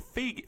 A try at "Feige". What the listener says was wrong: It's a hard G.